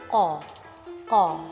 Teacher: pertemuan antar pangkal lidah dengan anak tekak sehingga udara terhambat secara sempurna. Namun ketika dilepaskan secara tiba-tiba akan terjadi satu letupan. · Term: qaf